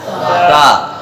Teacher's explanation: یعنی سرا زبان اوپر والے دانتوں کا نچلا اندرونی حصہ، وہاں سے سا ادا ہوتا ہے